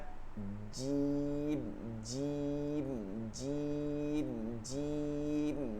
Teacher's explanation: মাখরাজটা হচ্ছে 6 নম্বর মাখরাজ, জিহ্বার মধ্যখান, তার বরাবর উপরের তালুর সঙ্গে লাগায়া জিম শিন ইয়া